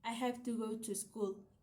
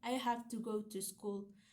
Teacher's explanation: In this sentence, have go and school are the stressed words that give the true meaning to the sentence. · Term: sentence stress